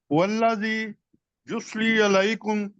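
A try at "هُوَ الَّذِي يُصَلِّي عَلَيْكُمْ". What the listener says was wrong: یصلی بڑے آپ آرام سے پڑھ سکتے ہیں کوئی بس مجھے آپ کے اندر کوئی غلطی نظر نہیں آتی آپ صرف تھوڑا جلدی کر لیتے ہیں یصلی آپ آرام سے پڑھیں اس کو دیکھ کے سواد ہے لام کے اوپر شد ہے یصلی علیکم جی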